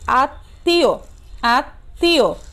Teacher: বর্ণের কি হয় দৃত্ত হয় অর্থাৎ কি হয় দুইবার উচ্চারিত হয় এবং সামান্য নাসিক্য স্বর হয় মানে নাক দিয়ে উচ্চারণটি হয় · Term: দ্বিত্ব